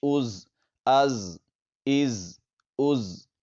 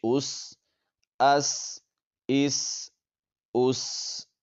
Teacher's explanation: حمزہ زا زبر از، تو یہاں پر سیٹی کی طرح تیز آواز نکلے گی، زا، سین اور صاد میں۔ حمزہ زا زیر از، حمزہ زا پیش از، از، از، از۔